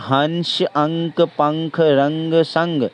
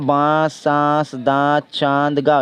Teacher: अंक सिर्फ नाक से उच्चारण हो रहा है और बांस जो है नाक और मुंह दोनों से ही उच्चारण हो रहा है